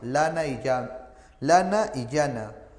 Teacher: El sonido, el aire sale por los costados, ¿no? El sonido sale por los costados, ¿de acuerdo? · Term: Laterales